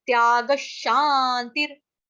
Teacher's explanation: विसर्ग का उच्चारण होगा आधे श से, क्यों? क्योंकि आगे शांतिर आ रहा है।